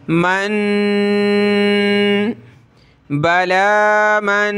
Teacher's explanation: यहाँ हमने इख्फा करना है, नाक में आवाज़ पैदा करेंगे।